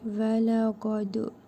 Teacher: Dəl hərfinin üzərində cəzm var. Qalqala edərək vurğulu tələffüz edirik.